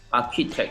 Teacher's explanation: It's not the same CH sound that you hear in words like chocolate and cheese. It's a k sound.